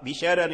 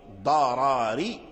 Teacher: ورش قرأت بشرار بالترقيق وقرأ أولي الضرر ضراري بالتفخيم الراء الأولى